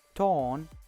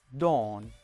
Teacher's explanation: t is voiceless alveolar stop. D is voiced alveolar stop.